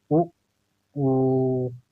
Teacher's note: जब हम लोग उ का उच्चारण कर रहे हैं तो हवा कहाँ पे टकरा रही है, होठ पे। कहाँ पे, होठ पर। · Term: ओष्ठ